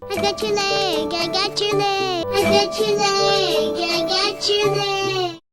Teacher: when we have a word ending in T followed by a word like you or your, it morphs into a ch sound. Got your becomes gotcha.